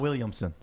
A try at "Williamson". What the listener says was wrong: you said Williams. It's Williamson.